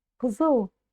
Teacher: у вас буква «к» все равно будет звучать звонко. Кзыл, потому что и после буквы «к» будет идти буква «з».